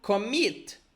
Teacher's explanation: we have stress on the second syllable, stress, it's like the second syllable is stronger